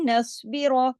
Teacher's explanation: नस्बिर, स्वाद मोटा, इसमें रॉ भी हैवी करके, रा कंडीशनल है, जबर है, इसलिए रा को भी मोटा पढ़ेंगे